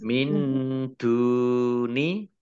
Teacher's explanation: Dal domah wawu sukun mat tabi'i panjang 2 harokat.